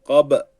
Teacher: cezimli B kalkale harfi olduğu için bunu da oynatmam gerekiyor oynatmadığı takdirde poyrazın p'si gibi kap olur kur'an-ı Kerim'de ise p